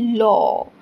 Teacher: জিভের সামনের অংশ ওপর দিকে ভাঁজ হয়ে দন্তমূলকে স্পর্শ করে, তখন শ্বাসবায়ু জিভের সামনের দিকে দুপাশ দিয়ে কি বাইরে বেরিয়ে আসে, আর এই দুপাশ দিয়ে বাইরে বেরিয়ে আসার জন্য একে পার্শ্বিক ধ্বনি বলে।